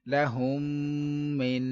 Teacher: اب اس کلمے میں میم ساکن کے بعد دوسری میم آ رہی ہے، لہٰذا ادغام شفوی ہوگا اور غنہ بھی کریں گے